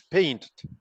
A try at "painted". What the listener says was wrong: paint, you cannot double the T. Si el verbo ya termina en T o D, entonces la pronunciación es id. Painted.